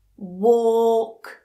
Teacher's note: so that 'o' make sure it's nice and long. Don't make it short otherwise it becomes 'wok'